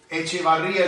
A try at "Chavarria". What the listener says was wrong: No. It's not Echevarria. It's Chavarria. Without the E.